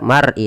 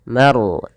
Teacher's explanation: Bainal mar'i, tebalkan lafal ro-nya karena dia ada huruf ro, kita namakan dengan ro tafkhim. Harus ditebalkan, jangan dibaca mar'i tapi maru, ma-nya tipis, ro-nya tebal